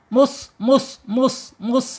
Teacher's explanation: shofir itu ada suara desisan ketika dia sukun